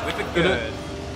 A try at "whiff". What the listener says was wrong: It's not whip, it's whiff.